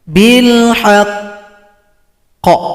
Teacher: Cara berhentinya sukunkan, tunggu dua ketukan baru dipantulkan.